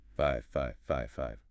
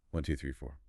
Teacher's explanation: And we use intonation. The voice goes up for the first group and down for the last group.